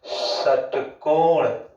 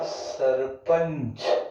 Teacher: जिन ध्वनियों के उच्चारण में जो वायु होती है वो जीभ से रगड़ खाकर बाहर निकलती है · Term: संघर्षी व्यंजन